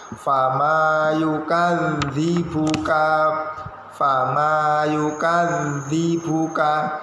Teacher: Panjang pendeknya fama yukadzibuka, itu ada tasydid di huruf za, ditekan dulu, anginnya mengalir huruf za. Fama yukadzibuka, fama yukadzibuka, lidahnya di antara gigi atas dan gigi bawah.